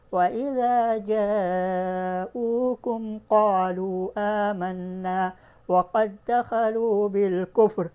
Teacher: تو وَقَدْ دَخَلُوا میں ادغام صغیر مثلین ہوا، لیکن اس میں بھی ہم غنہ نہیں کر کے پڑھیں گے